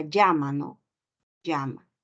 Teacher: con la lateral palatal